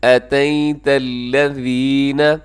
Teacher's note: یا ساکن سے پہلے جب زبر ہوتی ہے تو یا لین ہوتی ہے، نرمی کے ساتھ پڑھنا ہے، مجہول نہیں پڑھنا، جھٹکا نہیں دینا